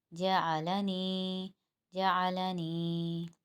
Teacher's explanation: جتنے بھی ابھی ہم نے تمام مرکبات پڑھے ان سب میں یا مدہ ساکن ہو رہا ہے، یا مدہ ساکن ہوگا تو اس کو ایک الف کی مقدار ہی کھینچیں گے۔